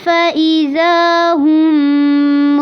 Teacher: فَإِذَا ہم میں زا کو لمبا کرنا ہے، ہم پہ غنہ کرنا ہے